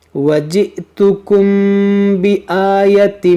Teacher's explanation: میم ساکن کے بعد با ہے، یہاں پر اخفاء شفوی کا قاعدہ لگے گا